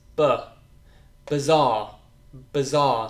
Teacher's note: the I, is not I, it's actually the schwa sound